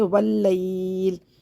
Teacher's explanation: وقف صورت میں پڑھیں گے واللیل، اور زیر حالت وقف میں حذف ہو جائے گی